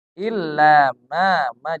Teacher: Illa 2 harokat karena di depannya bukan huruf hamzah.